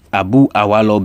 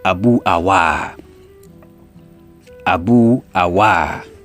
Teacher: Abu awa. So the lo is elided and the a sound is elongated.